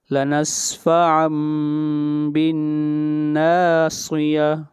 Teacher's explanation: یہاں پر نون کو نہیں پڑھا جائے گا بلکہ میم کو پڑھا جائے گا، نون کو میم سے بدل دیں گے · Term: اقلاب